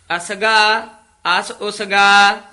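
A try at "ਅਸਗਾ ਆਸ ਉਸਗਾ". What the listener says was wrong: हाँ जी असगा आस उसगा नहीं कहना असगा इथे विश्राम ला देना आस उसगा पोले पद बोलने हन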